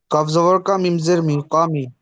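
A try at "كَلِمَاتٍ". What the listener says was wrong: কপ না, আবার বলি। এর মিমের আগে কিন্তু এখানে আরেকটা হরফ আছে। কালিমাতিন, হজরকে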